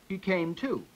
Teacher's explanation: I've got primary stress on to and tertiary stress on came. The to is still a preposition because there's only a tertiary stress in the phrase.